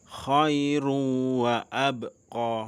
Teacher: Ada tertulis khairun wa abqo. Namun karena ada pertemuan tanwin dengan huruf wau, bacalah sebagai khairuw wa abqo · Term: idgham bighunah